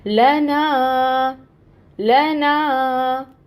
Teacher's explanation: यहाँ हम कहेंगे ना पे अलिफ मद हो रही है, और ये मद हमारी ड्रॉप नहीं होनी चाहिए। ना को हमने 2 हरकत लंबा पढ़ना है